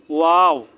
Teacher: 2 ঠোঁট গোল করে সামান্য খোলা রেখে